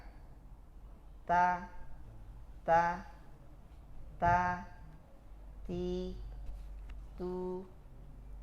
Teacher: di ujung lidah kita menempel ke Pangkal gigi atas misal ini pangkal gigi atas tempelkan dulu baru ucapkan ta ta